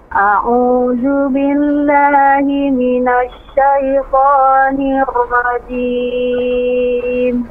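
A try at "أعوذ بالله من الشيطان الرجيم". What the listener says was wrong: Baik, ra-nya jangan terlalu banyak getaran, jangan nirwajim. Dua getaran aja.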